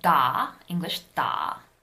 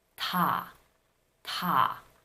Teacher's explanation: the English D is a voiced consonant, but the Korean ta is unvoiced.